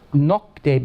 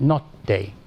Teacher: But in the Eastern Romance, nocte becomes notte. So the KT assimilate. You get two T's out of it